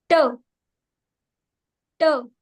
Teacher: The tongue was touching the back of the teeth ridge. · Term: alveolar